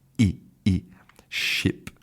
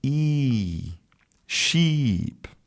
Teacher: in the first one you have a short vowel /i/ /i/ ship and in the second one you have a long vowel /i/ sheep and short and long vowels are really important a part of correct English pronunciation.